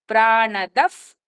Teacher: ఈశానః ఎఫ్ అని పలికి ప్రాణదఫ్, అక్కడ ప్రా ముందు వచ్చిన విసర్గని ఎఫ్ కింద పలుకుతాము